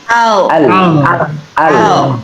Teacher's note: maka lam ketika sukun ujung lidahnya menempel di langit-langit depan, di atas gusi. Al. Jadi jangan dilepas, jangan al.